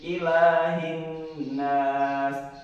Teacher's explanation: Hin ini adalah alif lam syamsiyah karena huruf H sebelumnya digabungkan dengan nun. Cara membacanya adalah 1 alif atau ditekan saja ya, ditekan. Lamanya 1 alif atau 2 harkat.